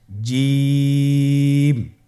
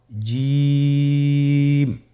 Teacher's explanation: জিম হরফটি বারিক হরফ এটা উচ্চারণ করতে হবে তিন আলিফ টেনে · এর মাখরাজ হলো জিহ্বার মধ্যখান, তার বরাবর উপরের তালুর সঙ্গে লাগিয়ে উচ্চারিত হয়।